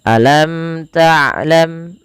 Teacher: mim dan mim Jelaskan karena ia ada namanya Izhar Syafawi dijelaskan dan tidak boleh ditahan